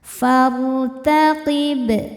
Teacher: Far, nah sehingga kita langsung ke ro sukunnya ini dibaca tafkhim karena sebelumnya berharokat fathah, maka ro-nya tebal.